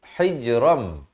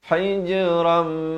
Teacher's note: Asalnya hijran, datang mim jadi hijram. Hijram, dua harakat, barulah mah. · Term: masuk berserta dengung